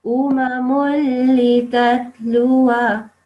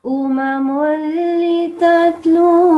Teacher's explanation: there's a lam with a shadda, so you don't make the noon sound